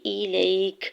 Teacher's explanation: حمزہ کی زیر کو جلدی سے ادا کرنا ہے